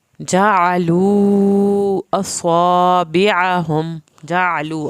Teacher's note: جعلو عین کو حلق سے پڑھنا ہے